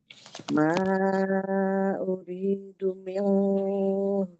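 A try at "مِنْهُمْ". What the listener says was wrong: Izhar. Ya, izhar minumnya jangan ditahan.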